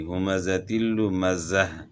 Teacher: جب ہم وقف کریں گے تو یہ گول تا ہا سے تبدیل ہو جائے گی، آخر میں ہا کی آواز آئے گی